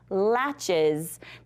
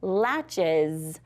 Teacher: When you're adding that ES, it really kind of sounds like a Z, not an S. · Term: Z sound